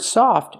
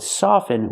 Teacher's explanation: with soften we do not pronounce the T never pronounce the T in the word soften with the verb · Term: silent